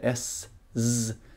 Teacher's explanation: motsvaras alltså av s och Z om man säger s z så känner man att det är samma ljud fast det ena är tonat och det andra inte